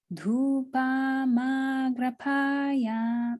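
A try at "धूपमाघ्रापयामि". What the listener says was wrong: And you know what happened is that you made this into a long one. So it's just dhupa, dhupa, dhupa. So just do that first. Dhupa. So long and short, and then it's long. Dhupamagrapayami.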